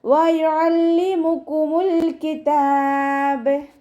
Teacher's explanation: വയുഅല്ലിമുക്കും വാവ് ഉച്ചരിക്കുന്ന സമയത്ത് ചുണ്ടുകളെ വട്ടത്തിൽ പിടിച്ചു കൊടുക്കുക. അയണിൻ്റെ സൗണ്ട് ഹംസയുടെ സൗണ്ടായി പോവാതെ നോക്കുക കേട്ടോ. വയുഅല്ലിമുക്കുമുൽ കിതാബ്.